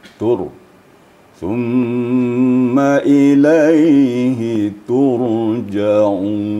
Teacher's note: Ra apabila sebelumnya baris depan atau baris di atas, sedangkan ra itu sukun, maka ra itu dibaca tafkhim. Tafkhim artinya tebal.